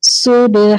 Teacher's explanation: با پر جب با ساکن ہوتا ہے تو قلقلہ ہوتا ہے، آواز پلٹ کر آتی ہے